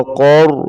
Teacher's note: क़ाफ को रा के साथ मिलाएंगे और क़ाफ को मोटा करेंगे।